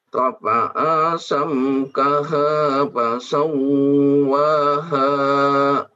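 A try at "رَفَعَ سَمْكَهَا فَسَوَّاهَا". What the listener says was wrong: Rafa'a pendek semua.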